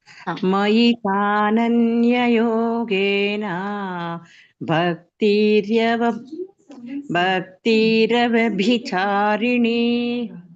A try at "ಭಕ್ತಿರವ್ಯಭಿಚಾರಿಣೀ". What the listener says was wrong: ರವ್ಯಭಿ ಅಲ್ಲಿ ಒತ್ತು ಬರ್ಬೇಕು, ರವ್ಗೆ. ಭಕ್ತಿ ರವ್ಯಭಿ ಎಲ್ಲ ಚೆನ್ನಾಗ್ ಬಂತು ಮಾತಾಜಿ, ಕೊನೆಗೆ ಎಳಿಬೇಡಿ ಅಷ್ಟೇ. ಯೋಗೇನ ಎಣಿ ಮಾತ್ರ ಎಳೀರಿ, ನಡೆಯುತ್ತೆ.